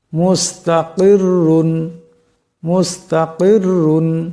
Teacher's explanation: এখানে দেখেন রাশের তনবিন থেকে রাকে মোটা আওয়াজে পড়তে হবে